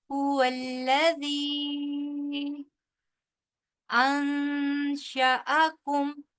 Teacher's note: یہاں پہ غنہ ہوگا کیونکہ نون ساکن کے بعد حروف حلقی کے علاوہ جو 15 حروف ہیں ان میں سے شین آ رہا ہے · هو الذی، دال کو بہت ہی نرمی کے ساتھ ادا کریں گے اور آگے کیونکہ یائے مدہ کے بعد اگلے حرف کا جو پہلا ورڈ ہے وہ حمزہ ہے، لہٰذا یہاں پہ بڑی مد ہوگی